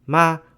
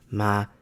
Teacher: Ma with a high tone means mother, ma with a low tone means horse